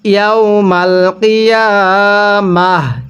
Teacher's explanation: ওয়াকফের সময় এই তাটিকে হা বানিয়ে পড়তে হবে।